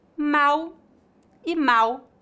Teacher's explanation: no Brasil a letra L em final de sílabas é pronunciada exatamente com a letra u portanto pronunciamos mau com u e mal com l então para